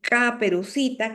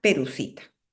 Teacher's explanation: los sonidos que se articulan con la parte de atrás se cambia por los que se articulan por la parte de adelante. En lugar de decir caperucita, que es un sonido posterior, dice Perucita. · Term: Frontalización